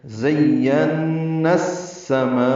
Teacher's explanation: ذات صفیر کی آواز سے ادا کرنا ہے، یا سے ملانا ہے، یا کو نون سے ملانا ہے، نون مشدد پہ غنہ ہے، زین پڑھنا ہے، نون کو السماء کی سین سے ملانا ہے، ادغام شمسی ہے